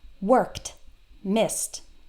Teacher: t when the last sound in the word is unvoiced so s is an unvoiced sound there's no vocal cords it's just air and k is also an unvoiced sound